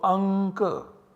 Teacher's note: this anuswara is to be substituted by a savarna of ka, which is the nasal savarna of ka, which is ng.